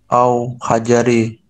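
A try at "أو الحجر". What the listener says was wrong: Hajar ini ya, bukan hajri, tapi hajar artinya batu.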